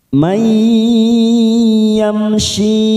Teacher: ada mim sukun, namanya idhar safawi, kita baca jelas tanpa mendengung. Yamshi, kasrah bertemu ya sukun 2 harokat.